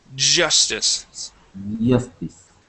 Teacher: pronounce that J okay it's a j j sound and you you vibrate here in your throat the J is a voiced sound